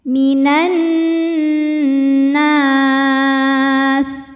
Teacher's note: Cara bacanya didengungkan, jadi bunyi N tahan sampai ada suara masuk hidung kurang lebih 2 harokat. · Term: gunnah musyaddadah